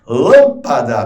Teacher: Lâmpada, perceba, a sílaba tônica é a antepenúltima.